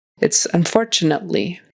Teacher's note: Unfortunately, and it's a really kind of a quick stop of a T.